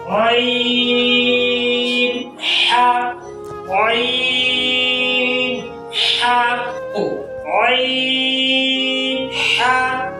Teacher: عین، حا ادا ہوتے ہیں وسط حلق سے، یعنی گلے کے درمیان سے. یہ 2 حرف ہیں جو گلے کے درمیان سے ادا ہوتے ہیں.